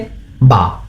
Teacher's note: বা উচ্চারিত হয় দুই ঠোঁটের বেজা অংশ হইতে